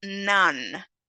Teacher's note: voiced, alveolar, and also nasal, such as in none.